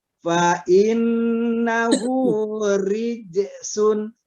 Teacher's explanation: ri dia getarannya lebih dari satu, lebih dari dua.